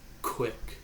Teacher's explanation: your tongue is at the top of your mouth it's holding back air for a second then it's letting it go